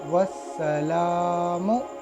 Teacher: अलिफ लाम और फिर हुरूफ शमसी में से सीन आया, तो इस अलिफ लाम को हम नहीं पढ़ेंगे, डायरेक्ट वाव से सीन से मिला लेंगे। वाव सीन जबर वस, सीन जबर सा, वस, लाम खड़ा ज़बर ला, वस्सला, मीम पेश मु, वस्सलामु। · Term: हुरूफ शमसिया